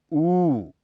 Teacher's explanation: इसके उच्चारण में जीभ का पिछला हिस्सा बहुत अधिक ऊपर उठ जाता है।